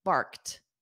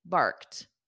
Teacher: So it ends on a soft T.